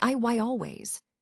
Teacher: Here, the Y sound is a quick, gentle glide that connects words smoothly. For example, when you say I always, the Y sound helps the phrase sound natural and connected.